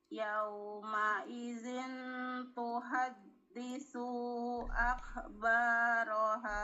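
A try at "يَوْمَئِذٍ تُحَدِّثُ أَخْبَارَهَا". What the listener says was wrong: Itu sunya kepanjangan. Nah, yauma idzin tuhaditsu akhbaroha. Tuhaditsu akhbaroha. Tuhaditsu. Tuhaditsu akhbaroha.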